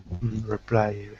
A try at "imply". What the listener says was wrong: Right, not reply, but imply.